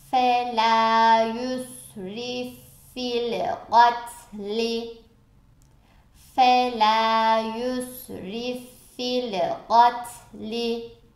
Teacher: Burada yusrif fil gatli diye harfleri ayırmak yerine ne yapıyorum? İki F'yi birleştirerek okuyacağım. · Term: idgam-ı misleyn